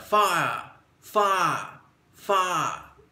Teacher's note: it sounds like fire, fire, fire, and there's no R. It's almost as though it's spelled F-A apostrophe U, fire.